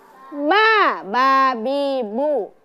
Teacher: Kemudian yang kedua adalah bertemunya antara dua bibir dengan dalam keadaan tertutup, maka itu keluar huruf ba bi bu.